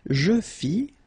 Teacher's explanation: final S not pronounced